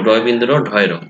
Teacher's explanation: র এই বর্ণগুলো দেখবে উচ্চারণের ক্ষেত্রে জিভে কম্পন তাড়না তৈরি করে। জিভের সামনের অংশ পেছনে কুঞ্চিত হয়ে বাঁকা হয়, এই জাতীয় ধ্বনিকে বলা হয় প্রতিবেষ্টিত ধ্বনি।